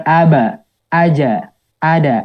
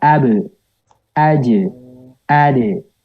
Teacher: Jadi pantulannya bunyinya adalah imalah atau dimiringkan.